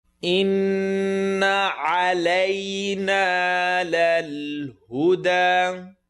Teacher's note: Noon shadda, full nasal sound.